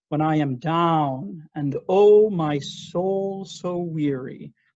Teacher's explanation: the word down is the important word